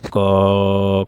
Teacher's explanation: अल्प प्राण जैसे क का उच्चारण करिए, इसमें कम हवा निकलेगी।